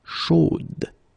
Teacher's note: So here you pronounce the final d, whereas in the masculine form you don't pronounce it.